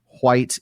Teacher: HW is a voiceless W as in English white in northern pronunciation which I'm not going to be able to do because I don't have northern pronunciation.